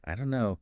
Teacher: the don't and know just merge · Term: linking